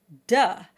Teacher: The closest sound to is as in duh. This is the schwa, which is the universal sound that we all make by default without any extra effort.